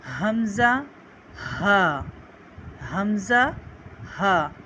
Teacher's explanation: حلق کے نیچے والے حصے سے اسے ہم ادا کرتے ہیں